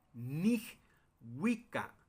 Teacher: la sílaba tónica está en wi